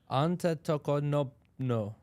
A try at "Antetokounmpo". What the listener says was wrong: You got to say it fast, like the announcers. It's Antetokounmpo.